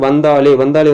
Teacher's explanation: வந்தாலே வந்து இந்த ஒரு மெல்லின எழுத்து இருக்குது. அதனுடைய இனமாகிய தா வந்து அமைஞ்சிருக்கு